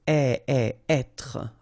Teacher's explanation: when you get this accent circonflexe here, you should really pronounce it openly. So, être. Okay, don't insist on the final être.